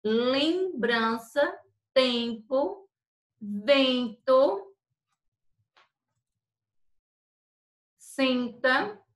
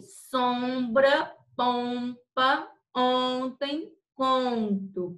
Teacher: Antítese, manto, é quando acontece também, gente, ó, com a N, que o AN vai ter o som de an, EM e EN tem o som de em, lembrança, tempo, vento, senta, IM e IN, impuro, símbolo, interior, síntese. Então, é um som que sai, um som nasal, gente, que você, quando vai pronunciar, ele sai o som do seu nariz